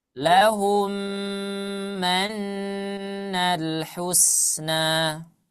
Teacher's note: langsung saja dari huruf H langsung ke yang mim bertasydid